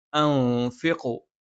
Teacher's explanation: സുക്കൂനുള്ള നൂനിന് ശേഷം ഫ വന്നു. അത് ഇഖ്ഫ ആണ്. നൂനിനെ അവ്യക്തമാക്കി ഉച്ചരിച്ചുകൊണ്ട് മണിച്ചുച്ചരിക്കും. അൻഫിഖു. പിന്നെ മീമിന് ശദ്ദാണ്, മണിച്ചുച്ചരിക്കണം.